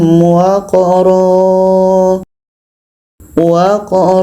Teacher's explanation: menjadi panjang alif panjang dua harakat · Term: mad iwat